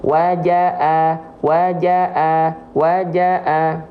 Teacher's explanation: kalau Hamza itu keluar dari pangkal tenggorokan ya dari tenggorokan paling bawah